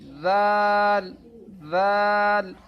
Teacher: ذال کو پڑھتے وقت زبان کی نوک اوپر والے دانتوں کے کنارے سے لگیں گی۔ ذال، ذال، آگے والا جو حرف نقطے والا ہے یہ ذال ہے۔